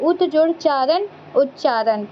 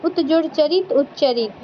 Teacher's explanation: जो त होता है वो च बन जाता है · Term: त का च